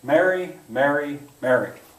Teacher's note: where i live and in my speech pattern mary mary mary they all sound the same